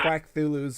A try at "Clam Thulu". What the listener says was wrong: It's Clam Thulu. You said Quack Thulu.